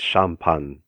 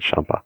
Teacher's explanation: we just drop the final uh n syllable